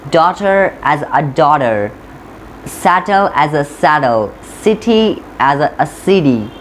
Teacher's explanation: T converts into the D, as you noticed it.